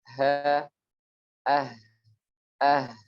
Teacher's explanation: huruf ha terucap dari hembusan nafas yang terhembus dari paru-paru tentunya. Kemudian bergesekan dengan pita suara yang sedikit terbuka.